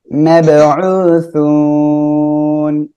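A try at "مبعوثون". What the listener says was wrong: হ্যাঁ, মোব না তো, মাব। মাব মাবউসুন, এভাবে পড়তে হবে, ঠিক আছে।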